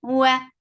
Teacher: Circle in your lips, the sound is short.